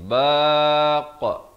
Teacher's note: Jangan dipepeskan. Di akhir itu bila kita nak lepaskan lantunan itu kita bulatkan.